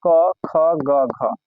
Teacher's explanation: जो कंठ है कंठ से आवाज निकलेगा